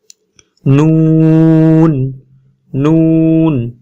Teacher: জিহ্বার আগা উপরের দাঁতের মাড়ির গোড়া থেকে একটু উপরে লাগে, মাড়ি থেকে একটু উপরে যাবে, যে তারপর উচ্চারণ হবে নুন নুন।